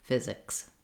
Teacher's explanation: Watch out at the end of physics that you want to make sure that you have that both that K and that S sound together, no sound in between them. So you want to just go quickly from the K to the S